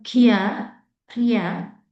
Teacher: there is smooth glide from e to a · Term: diphthong